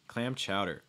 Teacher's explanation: This is actually a case where you're probably going to stress chowder.